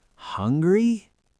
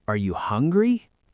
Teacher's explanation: The pitch slides up. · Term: rising intonation